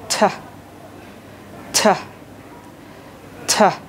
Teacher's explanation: তোমার জিহ্বার অগ্রভাগ, সেটা উপরের যে দাঁত আছে সেই দাঁতের গোড়াতে লাগাবা, লাগিয়ে সুন্দর করে একটু ইটা বের করবা। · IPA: /t/